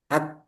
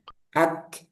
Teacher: Ak itu sidanya macet. Jadi, suaranya tertahan dulu. Ak. Nah, ketika dilepas baru muncul hamesnya.